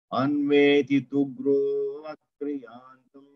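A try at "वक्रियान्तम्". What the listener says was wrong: అవక్రి అనకండి ఇక్కడ ఆ అని చెప్పండి వక్రియాంతం వక్రం అంటే వక్రమును ఆకర్షిస్తాం then it will make some then అవక్రియాంతం ఆయసూయాన్ సోమ తృప్సుషు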